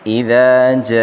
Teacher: جاء، یہ مد متصل ہے، مد متصل کو 5 الف کی مقدار کھینچ کر پڑھیں گے، یعنی 5 سیکنڈ تک۔